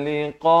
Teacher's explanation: Liqa itu dipanjangkan 4 atau 5 harakat.